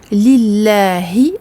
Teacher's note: le lam du milieu est également prolongé de 2 temps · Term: prolongation